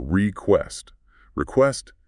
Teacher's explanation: The stress here is on the second syllable.